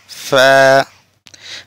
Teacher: প্রিয় বন্ধুরা, এরপরে ফা, পড়েন ফা, নিচে ঠোঁটের ফেট উপরে 2 দাঁত লাগিয়ে ফা, এভাবে একটু বাতাস বের হবে